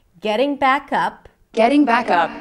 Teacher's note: Getting back up, notice again the connected speech, getting back, as in cat, up, right? But the k of back becomes the beginning of the word up.